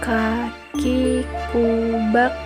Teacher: dikeluarkan dengan cara menyentuhkan pangkal lisan dengan langit-langit bagian belakang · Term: huruf Kaf